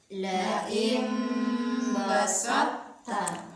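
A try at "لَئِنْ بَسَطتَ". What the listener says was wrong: Ya, jadi huruf to tetap ada sisanya makhrajnya ya. Sifatnya tetap ada. Caranya adalah angkat pangkal lidahnya. Setelah diangkat pangkal lidahnya untuk menyebutkan to, setelah itu baru kita turunkan lidahnya untuk menyebutkan huruf ta. Jangan naik terus.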